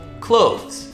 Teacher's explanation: the trick here is the two consonant sounds back to back. It's the voice TH, the, and then Z right after.